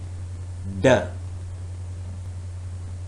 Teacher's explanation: The narrowing is complete. The tongue is completely blocking off airflow through the mouth. There is also no airflow through the nose. It is oral stop.